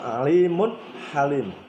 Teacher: Alimun mun, di sini ada mun domah tanwin bertemu dengan ha, harus dibaca jelas, tidak boleh dengung. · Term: idhar